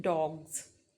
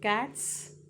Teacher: G is voiced, S becomes voice. T is voiceless, here S becomes voiceless.